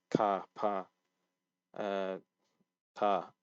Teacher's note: it's slightly more aspirated on the first consonant